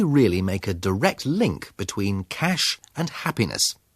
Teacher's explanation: His intonation, the higher note, the slower speed and careful stress, all indicate that we should pay attention to these words.